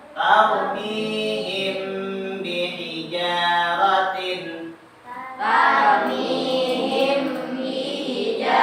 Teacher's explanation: Mim sukun bertemu dengan huruf ba disebut dengan hukum bacaan ikhfa syafawi. Cara membacanya dibaca atau ditahan, didengungkan.